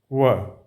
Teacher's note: य म व ह। व बोलिए, व दोनों ओठ सट रहे हैं, तो ये हो जाएगा व जो है यह दंतोष्टम उच्चारण स्थान इसका है।